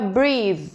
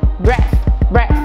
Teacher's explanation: Além de ser um som diferente, ser um outro som da vogal, ele é um som mais longo.